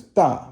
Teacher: The next one is da, which means big, fourth tone.